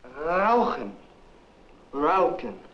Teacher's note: The American speaker is substituting an American R sound and an American K sound for the German sounds.